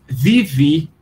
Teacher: O grego moderno vai ler isso, só que ele vai pronunciar, em vez de bé, bé, que é o som que faz a ovelha, ele vai pronunciar vivi, porque o beta é pronunciado com som de V e o eta é pronunciado com som de I